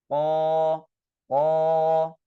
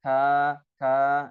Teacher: pangkal lidah kita naik ke atas, menyentuh dengan atau bertemu dengan langit-langit yang lunak. Nah, itu tempat keluarnya huruf qaf.